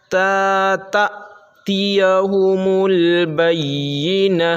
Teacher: دیکھیے تا یہاں تا پہ ہم جھٹکا اس لیے مار رہے ہیں کیونکہ یہاں تا حمزہ زبر تا، جب حمزہ پر ساکن ہوتا ہے تو وہ جھٹکا اس میں لگتا ہے، اس کے پڑھنے میں جھٹکا ہوتا ہے، حمزہ ساکنہ کے پڑھنے میں جھٹکا ہوتا ہے